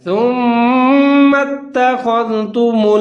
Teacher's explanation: دال کا خیال رکھنا ہے، اس کو زا کی طرح نہیں پڑھنا